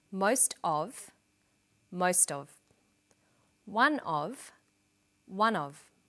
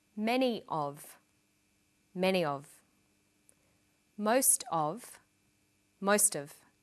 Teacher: Notice that of in these phrases is unstressed